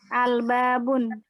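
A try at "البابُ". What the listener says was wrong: Kenapa tidak boleh tanwin? Karena ada Ada al, maka tidak boleh. Al-Babu.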